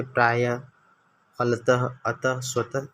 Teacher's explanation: विसर्ग, इनका उच्चारण ह की तरह होता है।